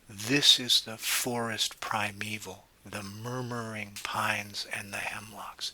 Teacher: feet are broken into threes the syllables coming in triplets and in those triplets of syllables that's the first syllable that gets the emphasis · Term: dactylic